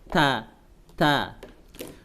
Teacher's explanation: Huruf ta di mana makhrajnya? Adalah di ujung lidah ada di pangkal gigi atas